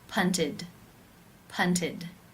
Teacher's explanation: This means it is case 3, where the ED is pronounced as the I as in sit with the D sound.